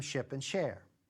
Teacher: if I hold it just a little bit longer an extra 50 or 60 milliseconds then it turns into ship and share